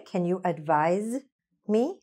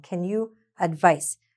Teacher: It almost has a z sound